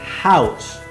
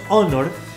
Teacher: house se pronuncia como una j house por otro lado tenemos honor que la h es muda